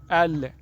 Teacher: Lateral approximate L is alvular and lateral approximate sound.